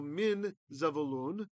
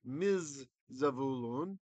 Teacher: The noon has assimilated into the zayin. That's why there's a dagesh there.